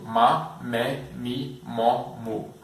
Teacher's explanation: Então você pode perceber que quando pronunciamos o M antes da vogal, nós fechamos os lábios. Na verdade, o M ele já começa com os lábios fechados.